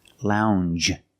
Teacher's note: It's a regular N, plus the soft J sound.